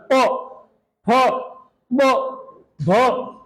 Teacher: ये प वाली लाइन बोलेंगे तो होठों का स्पर्श हो रहा है